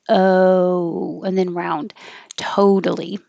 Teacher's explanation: use the american oh which begins more with an uh a schwa than an o so your lips begin unrounded o and then round